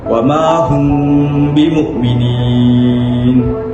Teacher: huruf mim itu bacaannya disembunyikan dalam huruf ba dengan merenggangkan sedikit bibir dan digunakan selama 2 harakat